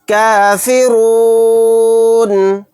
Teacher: یہاں پر نون کو ساکن بنا کر پڑھیں گے کیونکہ یہاں پر آیت ہو رہی ہے۔ را کو موٹا یعنی پر پڑھیں گے۔